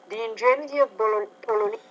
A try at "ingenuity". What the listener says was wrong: Now you're having trouble with that ingenuity, the ingenuity. So you're leaving out one of the syllables in that word again, the ingenuity.